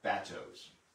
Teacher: call these bateaus, emphasis on the first syllable, the French word for boat, bateau.